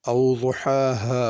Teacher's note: او ضحاها پہلے بڑی ہا ہے پھر چھوٹی ہا ہے، اور ضحا میں ضاد ہے، اس کو ضا یا ذال کر کے نہیں پڑھنا